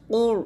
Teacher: ওয়াল কুর কফ র পেশ কুর এখানে র সঙ্গে মোটা করবেন